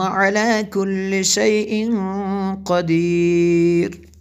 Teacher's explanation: کو پر پڑھا، علی کل شیء قدیر، یہاں پہ اخفا ہوگا، تنوین کے بعد قاف حروف اخفا میں سے اس لیے یہاں پہ میں نے اخفا کیا یعنی غنہ کیا